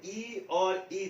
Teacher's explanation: ई और ई दोनों का उच्चारण तालु से होता है